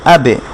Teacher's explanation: যেমন আ, হামজার উপরে আ যুক্ত করা বা আলিফের উপরে আ যুক্ত করা, এটা আটা কি বাকে ধরবে, সাকিন হচ্ছে চম্বুকের মতো কাজ করবে, সেটা তার আগের সাউন্ডটাকে ধরবে আবে আবে, আর বাটা একটু কলকলা হবে, সেজন্য ড্রপ করার মতো আওয়াজটা হবে আবে, মানে আব বলে থেমে যাবে না, একটু সাউন্ডটা আবার ফিরে আসবে।